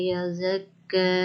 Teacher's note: کھڑی زبر کو ایک الف کے برابر پڑھتے ہیں